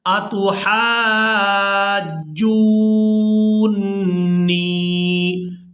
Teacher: نون مشدد پر غنہ بھی کریں گے